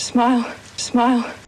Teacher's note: smoothed in the direction of being one single vowel quality so instead of i we have something like ah